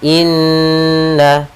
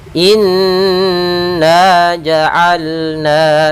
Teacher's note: Pada bacaan inna di sini ada lafal nun bertasydid, kita namakan dengan bacaan gunnah, atau hukum tajwidnya kita namakan dengan gunnah. Cara membacanya adalah kita menahan suara an-nya 2 harakat.